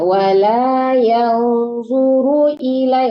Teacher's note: Runya itu yang nggak boleh dipanjangkan, jangan tertahan di runya ya Bu, soalnya runya nggak panjang. Wala yanzuru ilai.